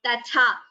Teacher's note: Here first ta is alpa prana, second tha is mahaprana.